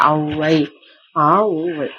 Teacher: அகரத்தையும் உகரத்தையும் கூட்டி ஒளிக்க அவை அவகாரத்தை போல ஒளிக்கும் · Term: அவகார பொலி